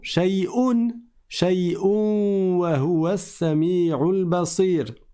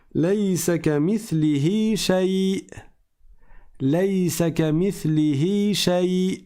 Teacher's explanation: Je m'arrête avec un soukoun sur la hamza.